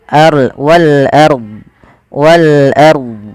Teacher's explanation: Ro tafkhim yaitu rnya dibaca dengan tebal.